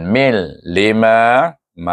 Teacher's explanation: Ini ya lam ma'il, apabila sesuatu suku kata bertemu dengan huruf yang sukun, gabungkan dia. Tanwin bertemu dengan lam dibaca dengan idgham bila gunnah. Dia idgham tapi tidak boleh baca dengan gunnah.